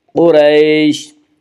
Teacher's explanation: اس کا قاعدہ ہے کہ را کے اوپر زبر اور پیش ہے تو را کو پر پڑھا جائے گا، را کے نیچے زیر ہے تو را کو باریک پڑھا جائے گا۔ یہاں را کے اوپر زبر ہے، اس سے را کو پر پڑھیں گے۔ قریش، قریش، قریش میں مد لین عارض وقفی ہوگا۔